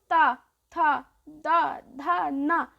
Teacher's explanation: देखो जीभ है वो दांतों को स्पर्श कर रही है